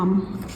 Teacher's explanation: लाम हम ऊपर के आठ दांतों से अदा करते हैं।